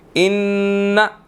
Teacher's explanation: नून मुशद्दिद है, यहाँ पर हम गुन्ना करेंगे